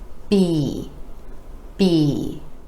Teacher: our lips come together for the sound and go into the vowel e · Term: b sound